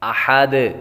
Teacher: احد، احد، ہا باریک پڑھیں گے، اور دال جب وقف کریں گے تو دال ساکن ہوگی، اور حروف قلقلہ جب ساکن ہوں تو ان میں خوب قلقلہ ظاہر ہوگا۔